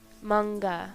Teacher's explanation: followed by k and g sounds n is pronounced as ng as in song · Followed by M, P, and B sounds, N is pronounced as M, sampo, stroll. Followed by K and G sounds, N is pronounced as NG